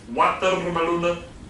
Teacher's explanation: Watermeloenen. That's a bilabial w. We don't have that in the Netherlands, so we tend to replace this with a v, yeah, or with our own version of the w, which to English ears sounds like a v.